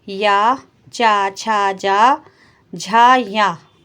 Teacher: तालु स्थान से बोले जाने वाले वर्ण है